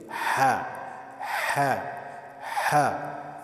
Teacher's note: تو یہ گلے کے درمیان سے ہا ہا آواز یہاں سے آنی چاہیے. آپ یہ دیکھ رہے یہاں سے آواز آنی چاہیے. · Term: حروف حلقی